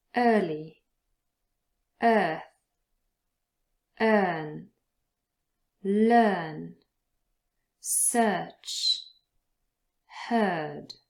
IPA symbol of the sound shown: ɜ: